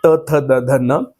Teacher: आपल्या दाताला आपली जीभ जी आहे ती टच होते स्पर्श करते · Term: दंत्य वर्ण